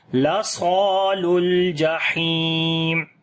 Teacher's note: ہا کو گلے کے درمیان والے حصے سے پڑھیں گے، لمبا بھی کریں گے، یا مدہ ہے